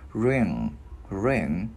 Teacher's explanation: Cái mình ngân cái chữ ng ra.